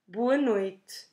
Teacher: we can drop that last E at the end of noite or pronounce it in a very soft way.